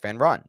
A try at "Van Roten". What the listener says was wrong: Van Roten. You kind of just like skipped over that third word right there.